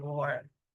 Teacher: Okay, then बात आती है टी ग्लोटलाइजेशन की। इसमें आप क्या करते हैं, ग्लोटल स्टॉप करते हैं टी को।